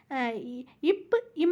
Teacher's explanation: முறை பாமா பிறக்கும் முறைன்னா இதழ் இயைந்து பிறக்கும் பகர மகரம் இது ஈஸிதான் மேல் உதடும் கீழ் உதடும் தம்முள் பொருந்துவதால் பகரம் மகரம் ஆகிய இரண்டும் பிறக்கும்